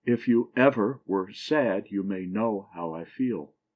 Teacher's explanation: a foot that has the last syllable accented and the first two not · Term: anapest